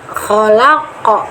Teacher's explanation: ada huruf qalqalah, yaitu huruf qaf di akhir kalimat atau di akhir ayat, jadi pantulannya harus besar ya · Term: qalqalah kubro